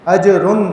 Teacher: را کے اوپر تنوین آ رہی ہے تو یہاں پہ غنہ نہیں کریں گے، عین آگے حروف حلقی میں سے اظہار کرتے ہوئے آگے گزر جائیں گے.